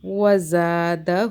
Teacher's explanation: اب یہ والا جو زا ہے یہ سیٹی والا ہے، اسے ہم زا ہی پڑھیں گے، زا سافٹ نہیں پڑھیں گے